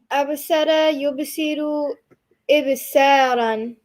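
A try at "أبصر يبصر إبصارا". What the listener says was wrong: Brilliant.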